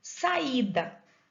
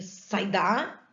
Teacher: a sílaba tônica tá no i